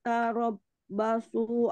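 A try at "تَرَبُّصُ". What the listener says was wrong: Arab busu bukan ba ya ibu. Arab bukan ba.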